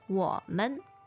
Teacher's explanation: the tones are 我 third tone, 们 neutral tone.